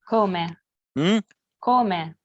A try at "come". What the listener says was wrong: When you pronounce the k, I detected maybe a slight puffing of breath.